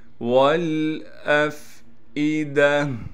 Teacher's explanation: وَالْأَفْئِدَةِ، واو کو لام سے ملائیں گے اس لیے کہ لام ساکن ہے، اسی طریقے سے حمزہ کو فا سے ملائیں گے اس لیے کہ فا ساکن ہے، یہاں بھی چھوٹا سا حمزہ نیچے لکھا ہوا ہے اس کو صاف کر کے بغیر کھینچے پڑھنا ہے۔